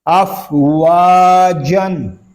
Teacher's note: واو کو ہونٹوں کی گلائی سے ادا کریں گے